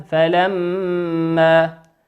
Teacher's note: الميم هنا مشددة تغن بمقدار حركتين